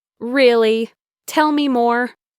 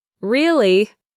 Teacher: you can use it to show you're interested in a conversation with an upward intonation